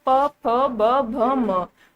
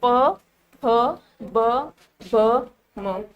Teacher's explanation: हमारे होठ आपस में चिपक रहे हैं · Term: होंठ वाले व्यंजन